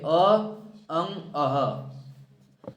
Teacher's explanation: अ भी बोला जाता है ह भी बोला जाता है और विसर्ग भी ये सब कंठ से बोले जाते हैं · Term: कंठ वर्ण